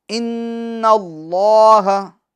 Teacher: ان میں نون مشدد کا غنہ ہوگا